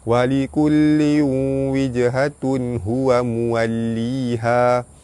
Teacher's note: Jim mati dengan kalimah qalqalah sugra, lantunannya tidak kuat · Tanwin bertemu waw, idgham ma'al gunnah, masuk dengan dengung 2 harakat.